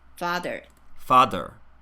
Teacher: The voiced TH occasionally is becoming a D sound.